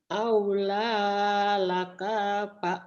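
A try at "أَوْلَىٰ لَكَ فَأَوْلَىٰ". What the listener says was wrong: Pendek. Aula lakafa. Aula. Kanya pendek. Aula lakafa aula.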